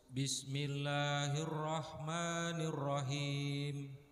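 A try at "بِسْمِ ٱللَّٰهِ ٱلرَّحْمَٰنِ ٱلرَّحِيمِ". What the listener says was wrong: Rahim. Keterangan dari saya masih huruf ha ya. Huruf ha masih kurang.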